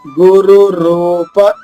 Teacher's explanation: రెండు రాళ్ళు వరుసగా ఉన్నాయి, ఒకటి హ్రస్వంగా రెండవది దీర్ఘంగా